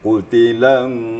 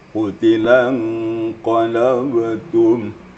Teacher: Ini ikhfanya. Nun mati bertemu qaf. Dia ditahan samaran nun matinya ditahan sedikit. Jadi qutilan gitu ya.